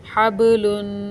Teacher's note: बा हरूफ़ कलकला है, इसके ऊपर जज़म है और ये इस वक्त सुकून की हालत में है, इसलिए इसको हिलाकर पढ़ा जाएगा।